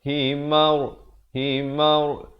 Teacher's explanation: Ra ni dibaca tebal. Jangan baca himar, mar. Tak betul. Yang betulnya himar, himar.